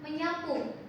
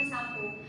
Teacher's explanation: ada fonem S dia berubah jadi huruf palatal nasal atau grafem ny. Contohnya itu ada kata sapu ketika dia bertemu dengan menasal dia akan menyapu bukan menjadi mensapu.